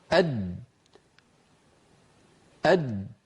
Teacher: هل لاحظتم كيف أن الصوت قد انقفل تماما عند وسط اللسان، وانتهت الأسهم التي عبرنا عنها بجريان الصوت من الوترين الصوتيين إلى مخرج الجيم، وقد انقفل المخرج تماما. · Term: جيم غير مقلقلة